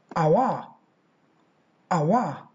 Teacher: the diphthong au plus schwa to get the sound awa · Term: triphthong